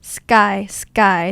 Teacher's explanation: Um because of the S sound here helps stop the aspiration from K help stop the the blast of air sk instead of sky sky right we don't really say that because of s sound stop the aspiration so it comes out as sky